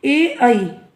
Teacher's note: ए आई का उच्चारण स्थान कंठ तालु माना जाता है। जो ए और आई है संयुक्त स्वर, इन्हें दो अवयवों का प्रयोग किया जाता है इनके उच्चारण में, कंठ और तालु से।